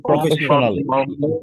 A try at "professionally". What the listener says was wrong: professionally স্টেজটা খেয়াল করেন, আমি ফ্যাট স্টেজ দিচ্ছি কিন্তু ফাস্ট। professionally, professionally, ফে না ফ্যা, professionally, পুরোটা হালকা করেন, professionally.